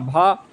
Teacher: सघोष महाप्राण में होता है हमारा भा